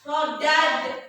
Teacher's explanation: Ini ada dal sukun bertemu dengan nun. Dal ini harus kita pantulkan. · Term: kokolah memantul